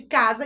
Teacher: o meu S com o som de Z, porque ele está entre duas vogais. 4 fonemas, 4 sons, se combinaram e formaram isso.